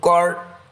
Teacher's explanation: ra sukun didahului fathah adalah bacaan ra tafkhim atau harus dibaca tebal